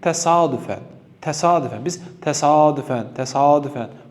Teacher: Bu sözdə sayit uzanması yoxdur. Sadəcə vurğunu, yəni a-dakı vurğunu daha qabarıq deyirik.